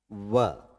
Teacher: जीवा जो है नीचे वाले दांतों को टच कर रही है और होठ भी हरकत में आ रहे हैं व बोल कर देखिए जीवा जो है नीचे वाले दांतों को टच कर रही है और होठ भी हिल रहे हैं तो क्रम की बात करें तो पहले किसका आ रहा है यदि इसको एक नंबर दें, इसको दो दे, इसको तीन दे, इसको चार दे तो यह पांचवा हो गया। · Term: दंतोष्ठ